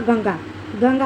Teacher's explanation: इसकी ध्वनि जो है मुंह से अधिक, नाक से कम, यानी कि मुंह से अधिक निकलती है और नाक से कम निकलती है